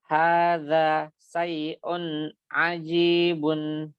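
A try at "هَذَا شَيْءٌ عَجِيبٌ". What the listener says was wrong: Bukan syai'un, ya. Syai'un. Sya, bukan sa tapi sya. Syai'un. Bukan sa, Pak. Sya, shin, shin.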